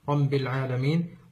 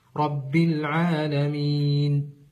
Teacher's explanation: حرف الباء رب العالمين او اخراجها من مخرج الخيشوم ر العالمين والصحيح ان تكون مكسوره مع اخراجها من مخرجها الصحيح وهي الشفتين